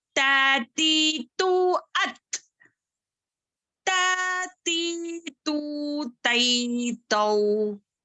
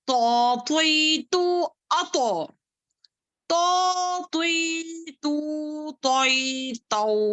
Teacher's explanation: تا جو ہے باریک پڑھیں گے تو جو ہے موٹا پڑھیں گے